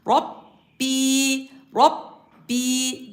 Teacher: ra harfi kalın ba harfi genize verilmeden yani Rabbi diye böyle ağzımızı gevşek kapatarak değil tam kapatarak Rabbi